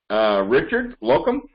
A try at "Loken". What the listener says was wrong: It's actually, there's an N, not an M. I don't know why it's only 5 letters, but everyone's always like Locum.